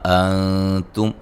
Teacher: یہاں نون ساکن کا باریک اخفا ہے